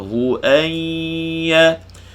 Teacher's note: Suara keluar daripada mulut bunyi ya. Suara keluar daripada dengung, daripada khayshum bunyi dengung. Keluar serentak, memanjang serentak, putus serentak. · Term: Idgham al gunnah